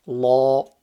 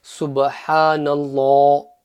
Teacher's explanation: Here I just want to mention that if the letter before Allah subhanahu wa ta'ala's name has a fatha or a dhamma, then Allah subhanahu wa ta'ala's name, the lam in Allah's name, will be read full mouth, Allah. So the example being subhanallah, because the noon has a fatha, it's nallah, the lam becomes full mouth.